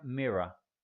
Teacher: Este último R no se pronuncia